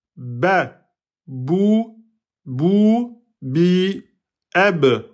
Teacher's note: Le ba facile, on colle les lèvres.